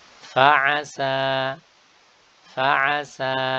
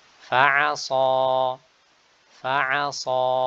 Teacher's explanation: Huruf sin itu istifal, sedangkan huruf shad itu isti'ala.